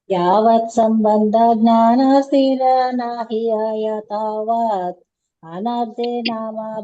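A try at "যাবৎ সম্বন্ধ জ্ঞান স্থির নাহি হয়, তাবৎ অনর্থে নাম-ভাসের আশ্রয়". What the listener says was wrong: కలిసిపోయింది. First line, second line కలిసిపోయింది.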